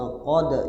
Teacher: Wa qad nazzala alaikum. Wa qad, ingat kalau dal bersukun artinya qalqalah. Arti qalqalah mantul. Ya, huruf qalqalahnya dipantulkan.